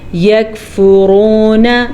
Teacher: را کو پر پڑھیں گے را پہ پیش کی وجہ سے